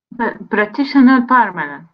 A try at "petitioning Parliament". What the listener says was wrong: There's no R. Say the word on its own. Petition. Not pr. There's no R there. Petition.